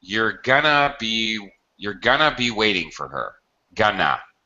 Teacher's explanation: this whole construction, going to be, is often reduced in pronunciation when we're using it as an auxiliary, and only when we're using it as an auxiliary.